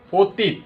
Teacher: এই অয়ের উচ্চারণ কিন্তু এখানে অয়ের মতো হয়নি, ও এর মতো হয়ে গেছে। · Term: বিবৃত উচ্চারণ